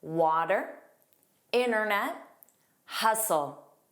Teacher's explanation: Did you notice that the T isn't pronounced?